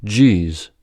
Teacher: You begin with the stop d, and then release the air slowly to become a j. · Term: voiced counterpart